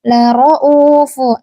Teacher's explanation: Nah, dalam kata lauf ini itu adalah mad badal ya. Jangan dibaca enam harakat gitu tapi dibaca dua harakat.